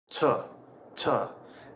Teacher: To do the T, the tip of the tongue on the alvolola ridge, we're going to push out with some aspiration, which is just a a push of air to make the T sound.